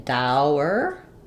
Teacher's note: when I'm saying dour I have the diphthong au and then the er sound. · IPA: /ˈdaʊɚ/